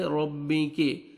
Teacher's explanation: रॉ के ऊपर फतह है, रॉ को आपने मोटा करना है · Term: रॉ को मोटा